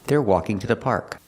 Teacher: two is not stressed and it's after a consonant we pronounce it ta